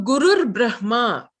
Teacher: So there you have Guruhu Brahma becoming R. So Gurur Brahma, the Visarga becomes a R.